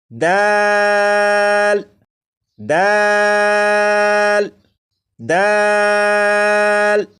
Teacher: یہ جو حرف ہے خا، خا کو بھی 1 الف کے برابر کھینچ کر پڑھیں گے، جیسے خو خو خو، 4 مرتبہ پڑھے گا۔ یہ ہے دال، دال کو 3 الف کے برابر کھینچ کر پڑھیں گے